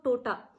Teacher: वो त को ट उच्चारित करेंगे